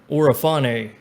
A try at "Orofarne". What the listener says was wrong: You were incorrect in the pronunciation of my name. You forgot the R in Orofarne, but